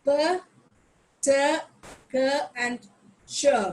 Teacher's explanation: these are voiceless sounds, where when I produce these sounds, there is a puff of air like p, t, k, and ch.